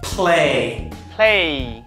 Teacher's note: Môi của bạn mím lại thật chặt. Chặt vào. Và âm này chỉ thoát ra hơi mà thôi. Bật hơi thật mạnh. Âm này là bật hơi thật mạnh.